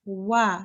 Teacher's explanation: this wa here is pronounced like a W. So your lips go round, but you don't touch your teeth or lips anywhere.